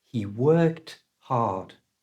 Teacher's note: you need to match that voiceless sound C with our voiceless option T